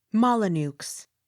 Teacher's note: The X sounded with slight accent on last syllable.